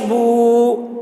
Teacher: یہ واو مدہ ہے، اس کو ایک الف کے برابر کھینچ کر پڑھیں گے